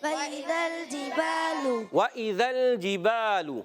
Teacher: یہ زیر آ گئی ہے، حمزہ بن گیا ہے، اور اس کی زیر کو بھی کھینچنا نہیں ہے۔ ذال پر زبر ہے، مگر ذال کی زبر کو لام سے ملائیں گے۔